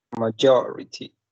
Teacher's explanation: majority has 4 syllables, and the stress is in the second one.